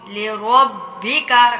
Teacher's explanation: را کو با کے ساتھ سختی سے ملانا ہے کیونکہ اس کے اوپر تشدید آئی ہے۔ تشدید میں جو ہوتا ہے 2 دفعہ پڑھا جاتا ہے مضبوطی کے ساتھ رک کر۔